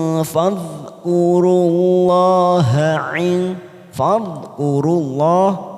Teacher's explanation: lam jalalah karena didahului dhammah maka kita baca tafkhim tebal · Min arafa, fa fathah diikuti alif 2 harokat. Ting, huruf ta kasroh tanwin bertemu fa, namanya ikfa ausat, kita samarkan bunyi tanwin pada huruf ta kasroh tanwin